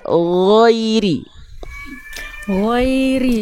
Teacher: bukan koiri tapi G yang dialirkan suaranya